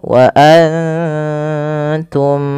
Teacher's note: Karena mim mati bertemu dengan mim itu ada bacaan idgam mimi dan caranya adalah kita menahan bunyi mimnya.